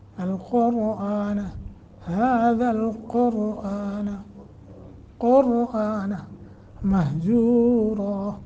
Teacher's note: قاف را دونوں موٹے کرنے ہیں